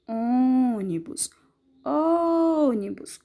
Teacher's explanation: o ó ele é a sílaba mais forte que é pronunciado com mais força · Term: sílaba tônica